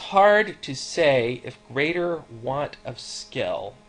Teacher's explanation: an unstressed syllable followed by a stressed one · we have a pattern of unstressed, stressed, unstressed, stressed, over and over again. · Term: iambic pentameter